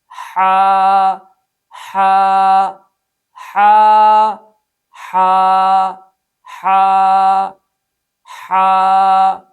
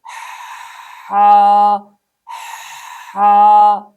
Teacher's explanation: number 1، بعض لوگ گلا گھونٹ کر اس حرف کو سختی کے ساتھ ادا کرتے ہیں، ہا ہا، جو کہ غلط ہے، اس لیے کہ ہم نے پڑھا اس حرف میں صفت رخوت ہے، صفت رخوت کی وجہ سے اسے نرم ادا کرنا ہے، نہ کہ سخت ادا کرنا ہے